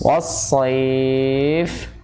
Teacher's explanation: Harusnya was-sayf karena sifatnya fa itu kan hamas. Was-sayf bukannya jahar.